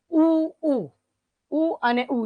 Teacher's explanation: ઉ અને ઉ તો એ ક્યાંથી બોલાશે હોઠ માંથી